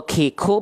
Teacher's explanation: Kalau masih ko, ki, ku berarti itu kaf, terlalu depan. · Dia mengeluarkan percikan nafas, bukan mengalir nafas tapi percikan. Karena nempelnya pangkal lidahnya sedikit ke langit-langit yang keras. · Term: sifat haus